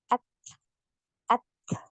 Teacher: Jadi untuk huruf ta ini nafasnya ngalir, suaranya tertahan ya. Aliran nafasnya mengalir, kemudian aliran suaranya tertahan. Ya, maka ketika kita sukun, ya kita sukun, maka huruf ta ini tertahan dulu, suaranya tertahan dulu ya, baru kemudian ngalir nafasnya.